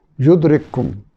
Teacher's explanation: یہاں کاف ساکن کا کاف میں ادغام ہو رہا ہے